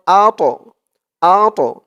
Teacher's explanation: এই তটা কলকলার হরফ ধাক্কা দিয়ে পড়তে হবে